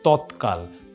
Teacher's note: দ ও ধ এর জায়গাতে অঘোষ অল্পপ্রাণ ধ্বনি হয়